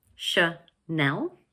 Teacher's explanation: This word has 2 syllables, Chanel, and the second one is stressed.